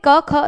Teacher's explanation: जब आप बोलोगे क ख तो ज्यादा स्वर तंत्रियों को जोर नहीं देना पड़ रहा। कोई कंपन नहीं हो रहा। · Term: अघोष